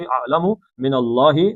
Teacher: پھر اللہ کا لام موٹا پیچھے زبر آ گئی